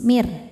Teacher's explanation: dibaca secara tarqiq karena sebelumnya ada harokat kasrah, maka ro-nya tipis, mir. Dan karena ro-nya bertasydid, ketika kita berhenti pada huruf bertasydid yang bukan huruf qalqalah, baju di toko, bukan huruf gunnah, nun dan mim, berhentinya pakaiin nabar, naikkan intonasi suara kita.